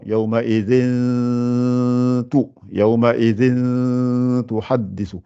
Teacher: Donc ça veut dire qu'on a une lettre Hamad Sarr, donc on a un ta, et avant on a un tanwin, donc il faut préparer la sorte du ta, et vous devez, vous dites pas yaouma izin avec n, donc on fait une dissimulation